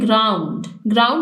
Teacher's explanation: ग्राउंड single syllable word है, इसमें दो वोवल साउंड्स इकट्ठे मौजूद हैं, ओ यू, तो ये बन गया डिफ्थॉन।